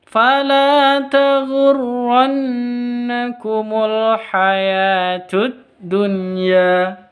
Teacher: Nun tasditnya gunah musyaddadah dengung dua ketuk